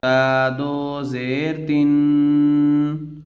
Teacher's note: تا پر تنوین ہے اس وجہ سے یہاں پر غنہ ہو رہا ہے، اور غنہ کی مقدار 1 الف کی برابر ہوتی ہے۔